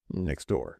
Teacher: so the T drops completely